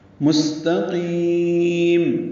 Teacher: لمبا کریں گے، مستقیم، میم کو سین سے ملا دیں گے، سین ساکن پہ ہمس ہوگا، صفیر کی آواز سے ادا کریں گے